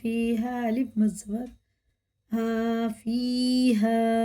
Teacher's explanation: یہ مد منفصل ہے، اس کے بعد الف آ رہا ہے تو یہ تین الف کے برابر کھینچ کے پڑھنا ہے